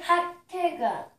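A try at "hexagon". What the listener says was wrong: 핫튼간 아니야. 악타건 이거 핵 아. X가 들어가잖아. 핵시건이야.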